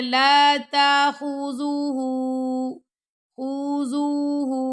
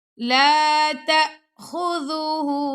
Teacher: آپ نے ہا کو لمبا کرنا ہے کیونکہ ہا کے اوپر الٹا پیش آ رہا ہے